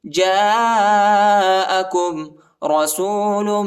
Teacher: جیم کے بعد جو الف ہے اس کے اوپر جو ہے بڑا مد ہے، اس کو تقریباً 3-4 سیکنڈ تک کھینچیں گے